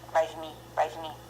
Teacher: When non-stress position O pronounced as A.